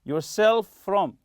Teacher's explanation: as if it's one letter f one sound like that yourself from don't separate them don't say self from